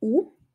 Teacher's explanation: und wird oft zu u